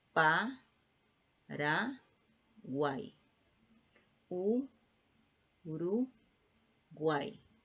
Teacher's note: La misma formación siempre. Vocal cerrada, vocal abierta, vocal cerrada. Siempre lleva la misma formación. No se separa la sílaba. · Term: triptongos